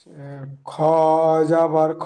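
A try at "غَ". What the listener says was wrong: খ নই, খর এই মাথাটা আরো লম্বা হবে। এখানে যেমন আছে খ, গইন হবে।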